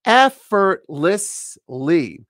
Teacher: four syllable word stresses on the first syllable